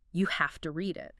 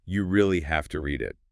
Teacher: the speaker emphasizes have to